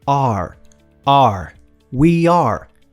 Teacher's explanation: você abre a boca como se fosse falar o A e prende pro O.